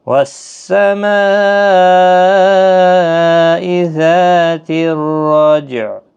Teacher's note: جیم ساکن پر قلقلہ ہوگا، عین ساکن ہوگا وقف کی صورت